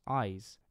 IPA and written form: aɪz (⟨-ize⟩)